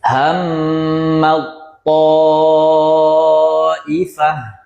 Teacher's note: Langsung masuk ke ta-nya. Ta yang pertama ini melebur.